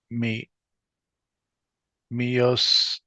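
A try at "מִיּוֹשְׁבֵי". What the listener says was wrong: It's so Yosheve, the dot that would normally be over the right side of the sheen is kind of indicated by the dot of the holam right before it. Mi Yosheve.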